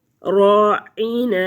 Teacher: راعین، را پر پڑا جائے گا، عین حروف ہلکی ہے، وسط حلق سے ادا ہوگا۔ نون، نون جو ہے اس کی آواز کو ناک میں نہیں لے کے جائیں گے۔